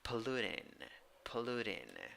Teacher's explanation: the vowel oh you have to round your lips ooh and third syllable i i is a weak e sound